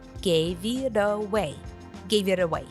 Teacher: The T sound stands between the two vowels and is turned into a D sound. And the V from give is linked to the next word.